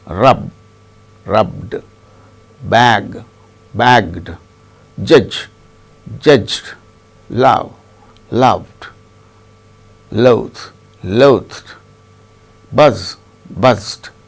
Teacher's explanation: If the present tense ends in any voiced sound, including vowel sounds other than D, the past tense marker is pronounced as D.